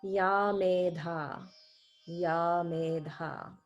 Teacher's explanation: there's no visarga at the end of medha